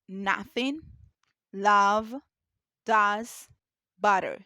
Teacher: nothing its technical name is the open mid back unrounded vowel a is a short vowel sound pronounced with the yaw made to open the tongue is central or slightly back and the lips relaxed with your mouth open about one fingers myth ah in shot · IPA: /ʌ/